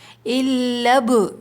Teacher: الب، با پہ قلقلہ ہوگا، حروف قلقلہ 5 ہم نے یاد کیے تھے، قاف قا با جیم دال، تو جب وہ ساکن ہوتے ہیں تو آواز پلٹ کر آتی ہے